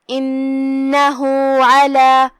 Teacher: کلمت علی میں یہاں حرف العین ہے، عین کی ادائیگی حلق کے درمیان والے حصے سے ہے تو ہم عین کو وہیں سے پڑھیں گے۔